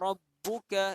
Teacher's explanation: Di sini ada huruf yang kita tekankan ataupun kita lantunkan bunyi. Kalau kita lantunkan, kita tekankan atau kita gandakan bunyi dia, iaitu huruf ba.